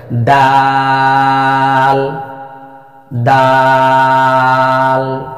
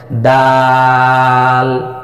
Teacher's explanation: শেষে গিয়ে জিহ্বার আগাটা তালুতে লাগবে